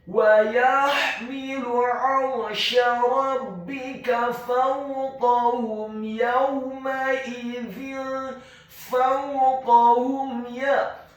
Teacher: Huruf mim yang sukun bertemu dengan huruf ya yang fathah, maka hukum bacaannya adalah izhar syafawi. Apabila ada huruf mim yang sukun bertemu dengan semua huruf hijaiyah kecuali huruf mim dan ba, dalam hal ini adalah huruf ya yang fathah, maka hukum bacaannya adalah dibaca dengan jelas izhar syafawi. · Kata fawqahum, huruf fa-nya dibaca fathah 1 harokat, huruf waw-nya dibaca sukun dengan posisi mulut kita agak tertutup dan dengan gerakan yang agak cepat. Kemudian huruf kaf-nya dibaca tafkhim, tebal, fathah 1 harokat, huruf ha-nya dibaca tafkhim, tebal, dhammah 1 harokat.